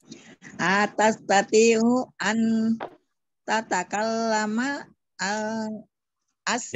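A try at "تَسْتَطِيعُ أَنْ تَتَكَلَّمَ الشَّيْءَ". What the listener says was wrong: Jangan bunyi lamnya tidak bunyi Bu, bunyinya tidak, alnya tidak bunyi.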